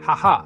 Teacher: A deep throat h not soft English h.